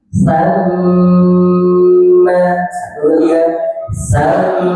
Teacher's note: Mim tasydid itu juga didengungkan, ditahan dulu.